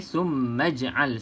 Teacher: Okey, maksudnya poinnya kat sini kalau nak sambung, maka hamzah wasal ni tidak kita sebut. Okey, summaj'al saja.